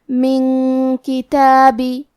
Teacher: کلمت کتابی میں کاف حروف الاخفاء میں سے ہے، اور اخفاء کا معنی ہے چھپا دینا، تو ہم نون ساکن کو چھپاتے ہوئے اور غنہ کے ساتھ یہ حکم کو ادا کریں گے